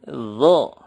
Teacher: ujung lidah menyentuh gigi seri atas dan digemakan didalam mulut